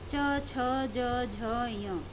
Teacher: च बोलते समय जीभ की नोक तालु को छूती है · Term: तालव्य व्यंजन